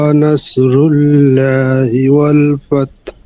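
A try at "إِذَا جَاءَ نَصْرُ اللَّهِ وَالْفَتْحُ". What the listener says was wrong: নাসরুল্লাহি লাহিনা, নাসরুল্লাহি ওয়াল ফাত। হ্যাঁ, জাল উচ্চারণ আরো ঠিক করতে হবে, জাল উচ্চারণ হয় না কিন্তু টোটালি। ওরা এই ওয়াও জবর ওয়া, র জবর র, অর, অরা বলা যাবে না কোনোভাবে, অর বলতে হবে সবসময়, রকে র বলতে হবে, অর।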